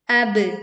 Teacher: pantulkan ba sukun dengan suara yang kuat